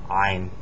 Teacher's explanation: pronounced in the back of the throat. It's not an A. It sounds kind of like an A, but it's not.